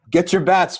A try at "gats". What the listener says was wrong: you're saying you're mispronouncing the G. You're mispronouncing the G as like a B.